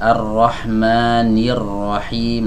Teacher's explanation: hamzah wasal yang ada pada kata Ar-Rahim tidak kita baca karena dia berada di tengah kalimat. Tidak kita baca seperti ini, Ar-Rahmani Ar-Rahim ya, karena dia berada di tengah kalimat ya.